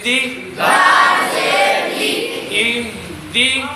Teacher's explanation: دال باریک ہے, دال کے نیچے زیر ہے, دال زیر دی ہوتا ہے, دال زیر دے نہیں ہوتا, دے نہیں ہوگا.